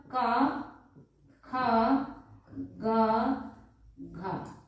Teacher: इनका उच्चारण स्थान कंठ होता है, यानी कंठ से इनका उच्चारण किया जाता है